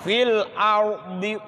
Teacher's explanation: Fil alif lam ra sukun sebelumnya fathah, apa? Dibaca tafkhim alias tebal.